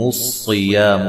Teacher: صاد کو خوب موٹا کریں، یا الف مدہ ہے، میم کو لمبا نہیں کرنا